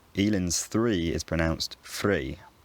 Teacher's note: th, as in thanks, seems to be merged with f, as in fix.